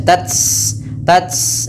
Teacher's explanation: pertama ditahan dulu suaranya baru dilahirkan nafas t tapi jangan banyak-banyak kesalahan yang terjadi adalah membaca tanya dengan banyak nafasnya